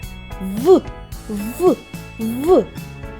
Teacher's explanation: Сьогодні ми познайомимось зі звуком в коли ми вимовляємо цей звук нижня губа наближається до верхніх зубок видихаємо повітря проривається в щілинку між верхніми зубами і нижньою губою голосові зв'язки працюють